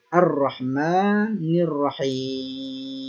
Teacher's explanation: Itu disebut dengan lam ta'rif asy-syamsiyah. Hamzahnya tidak dibaca, langsung ke huruf ketiga Ar-Rahim. · Artinya alif lam tidak dibaca atau lamnya digugurkan, masuk ke huruf setelahnya Ar-Rahim. Itu disebut dengan lam ta'rif asy-syamsiyah.